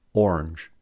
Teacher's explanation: many Americans pronounce orange as a one-syllable word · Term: syllable elision